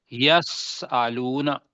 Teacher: سین کو جب کریں گے ایک پتلا بھی ہوگا اور ایک معمولی سی اس کے اندر وسل بجے گی. اب وسل نہ بجائیں جی تو کم از کم پتلا تو کر لینا.